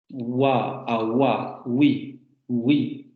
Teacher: Redondeamiento de labios y vibración de cuerdas vocales.